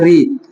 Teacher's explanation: मूर्धा से उच्चारण होता है री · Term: मूर्धन्य स्वर